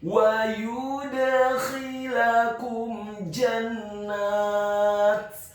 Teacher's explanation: Dalam hal ini adalah huruf dal yang sukun pengucapannya wajib untuk diqalqalakan atau dipantulkan